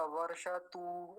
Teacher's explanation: तकार पर तो वो है ही ह्रस्व उकार, जल्दी ही बोला जाएगा